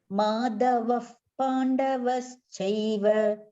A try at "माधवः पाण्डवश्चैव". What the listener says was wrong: That Mahaprana, I think you are stressing this here, Madhava. Yes, Madhava.